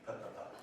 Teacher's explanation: So we've got P at the lips. Both lips. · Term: bilabial